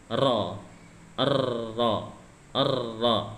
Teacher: yang digetarkan adalah ujung lidahnya itu digetarkan. Ro, ro, dinaikkan ke langit-langit bagian atas, bagian depan atas.